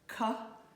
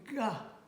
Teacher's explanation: Ka and ga are made exactly the same way, only the G is voiced.